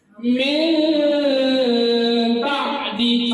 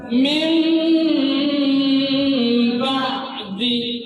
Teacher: nun mati bertemu dengan ba, ini tutup nunnya, tutup bibirnya. Kalau nggak tutup salah.